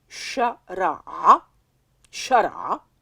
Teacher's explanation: c'est une consonne qui n'existe pas en français. En arabe, on l'appelle le ayn. C'est une consonne gutturale que tu auras peut-être du mal à prononcer et qui est symbolisée par l'apostrophe.